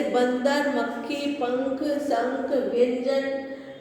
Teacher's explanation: अनुस्वार वाले वर्णों के उच्चारण में हवा नाक से बाहर निकलती है